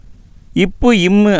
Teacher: இப்பு இம்மு அப்படிங்கிறது மேல் உதடும் கீழ் உதடும் பொருந்துவதால்